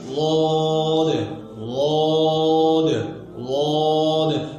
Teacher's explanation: लौद के अदा करते वक्त आवाज अपने मखरज में मजबूती के साथ यानी जमाव के साथ ठहरती है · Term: इस्मात